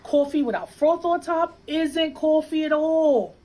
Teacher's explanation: one feature common in New York City is what we call a raised vowel in words like thought and cloth